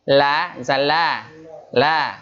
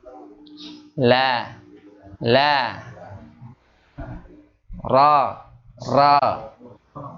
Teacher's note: Ketika dia mengucapkan hurufnya, maka udara yang keluar ada di celah samping lidah kita, makanya menyimpang, disebut menyimpang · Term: inhiraf